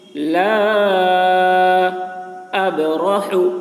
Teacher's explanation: با میں قلقلہ ہوگا، یعنی با کی آواز ڈبل نکلے گی